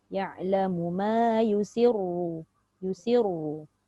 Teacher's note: dekat ra tu dia tak boleh nipis sebab ra berbaris depan